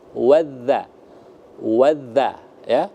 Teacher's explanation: Ya, dha-nya itu ya harus dilembutkan lagi. Karena makhrajul huruf dha itu adalah ujung lidah disentuhkan dengan ujung gigi bagian atas.